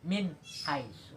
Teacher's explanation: maka dibaca Ezar jelas contohnya selanjutnya minhaisu ada huruf nun mati sesudah huruf nun mati itu ada huruf h huruf ha itu adalah huruf Izhar maka juga dibaca jelas